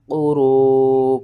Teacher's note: 5 الف کے برابر آپ نے اسے کھینچنا ہے